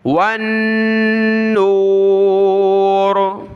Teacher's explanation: نون پر غنہ ہوگا، یہ تشدید ہے